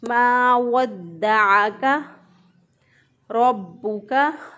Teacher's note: रॉ को पुर पढ़ा क्योंकि रॉ के ऊपर ज़बर है, रॉ के ऊपर ज़बर हो तो रॉ को पुर पढ़ते हैं। · आइन जो है इसको वस्ते हलक से अदा किया